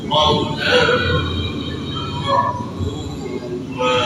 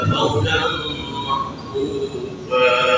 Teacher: Iwat sebagai ukuran dari tanwin, karena yang kita lihat di atas fa itu adanya tanwin. Yang didengar bukan suara tanwin, bukan makrufan, tapi panjang. Panjang itu dapat ukuran dari tanwin, maka disebut iwat.